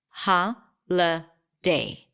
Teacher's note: the middle vowel is awah sound so I reduced the vowel there to awah ha day so we have three vowels here and three syllables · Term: schwa sound